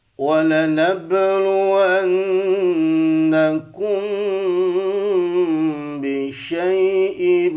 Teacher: Walanabluwannakum bisyai'im, idgham bigunnah, ya, tanwin ketemu mim, ya, karena mim termasuk karyawan idgham bigunnah atau idgham itu masuk bigunnah dengan dengung. Jadi masuknya tanwin ke mim dengan pakai dengung sampai 3 harokat. Bisyai'im masuk, ya, bisyai'im ditahan 3 harokat.